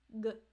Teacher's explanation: Consonants are blocked sounds, so they can be blocked in the throat, like G